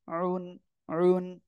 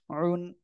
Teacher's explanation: ওকে, জ দুই পেশ জুন, ত দুই পেশ তুন, জ দুই পেশ জুন, আইন দুই পেশ উন, উন, গলাটা চেপে পড়তে হবে,